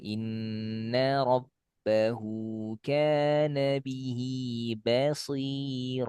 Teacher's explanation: Jadi dua kali ba rabba sama tipis dengan bihi ba ya harus sama kadar tipisnya.